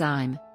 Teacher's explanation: I am is often pronounced as I'm, where sounds are elided.